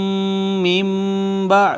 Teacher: نون ساکن کے بعد با حرف اقلاب ما قبل نون ساکن کو چھوٹی میم سے بدل دیا، اقلاب ہو گیا